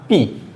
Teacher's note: मैंने जितनी भी बार B बोला मेरे दोनों लिप्स आपस में टच हुए।